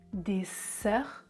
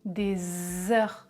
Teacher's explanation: des sœurs, c'est sourd, deuxième : des heures, ça vibre